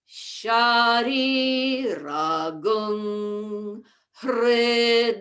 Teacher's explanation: And then ragung, and then you have to go up a little higher for hr. So that's the tricky part, is the transition in pitch from gung to hr.